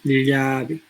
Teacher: Solo el medio dorso se aproxima, ¿no? Hacia el paladar, ya no entra en contacto